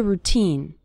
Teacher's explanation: the syllable teen is stressed in the word routine